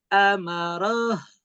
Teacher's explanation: Jadi jangan langsung habis, tapi masih ada sisa suara H-nya begitu yang dialirkan. Udah bagus, tidak berubah ke huruf H, tetap di posisinya, tapi tinggal dialirkan.